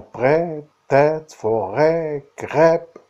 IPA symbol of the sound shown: ɛ